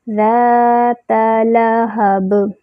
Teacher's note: تا پہ صرف فتحہ ہے، منہ اوپر کی طرف کھولیں گے، تا کو کھینچنا نہیں ہے۔ ذات لہب لام کا مخرج ہے ادنی الحافہ، ادنی الحافہ جب اوپر انیاب کو لگتا ہے تو لام ادا ہوتا ہے